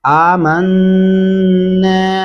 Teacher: आमन्ना गुन्ना करेंगे नून के ऊपर और नून के साथ जो अलिफ है ये नून की आवाज को लंबा भी कर रहा है